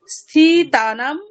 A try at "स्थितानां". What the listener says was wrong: स्थितानां इति दीर्घ नास्ति खलु